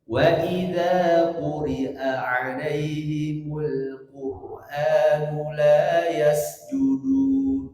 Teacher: Gak boleh ada yang masuk hidung ketika membaca pada arid disukun